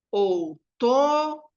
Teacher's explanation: E daí eu vou identificar a sílaba tônica, ó. Outono é a penúltima. Sendo a penúltima, é o to, e vai ser uma palavra paroxítona